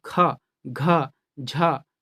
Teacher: महाप्राण, जो कि वायु का जो उच्चारण है वहाँ अधिक लगता है या अधिक शक्ति के साथ वह बाहर निकलता है